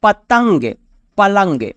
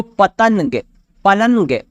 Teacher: نون جو ہے ظاہر نہیں بلکہ اس کی آواز ناک سے نکلتی ہے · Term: نون غنہ